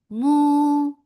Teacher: Let's make it two counts long without going into your nose for the long vowel. Long vowel should not go into your nose.